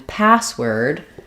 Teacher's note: for all of these that we have stress on both syllables primary stress on the first syllable or first word secondary stress on the second syllable or second word so in password my a sound is going to be longer